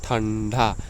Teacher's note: अनुस्वार के उच्चारण में जो वायु होती है नाक से निकलती है